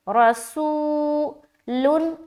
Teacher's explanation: واو ساکن سے پہلے پیش ہے، واو مدہ ہوگا، واو مدہ کو ایک الف کے برابر کھینچ کر پڑھیں گے